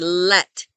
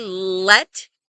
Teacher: Your tongue should be touching the roof of your mouth right behind your teeth